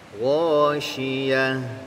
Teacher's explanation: Nah, perhatikan lagi huruf tak marbutah di ujungnya itu ketika diwakafkan dia berubah menjadi huruf ha, maka berikan sifat huruf ha, di antaranya adalah rokhawah, mengalir bunyinya